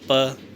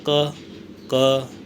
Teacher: प बोलोगे ना तो आपके दोनों होठों को एक बार मिलके अलग होना ही पड़ेगा। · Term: ओष्ठीय वर्ण